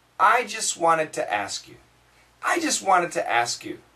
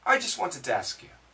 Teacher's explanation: Here, the N kills the T. So the S and the N are both killing the T. For American.